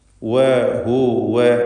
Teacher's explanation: വാവ് രണ്ട് ചുണ്ടുകളിൽ നിന്ന് തന്നെ ഉച്ചരിക്കുക. ശേഷം ഹ ദമ്മ നൽകി.